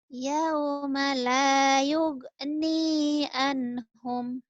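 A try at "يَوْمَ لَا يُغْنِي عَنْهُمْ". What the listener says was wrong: Yauma la yughni, jangan yuge ya. Yughni anhum, yughni. Apalah yuge, yughni, yughni.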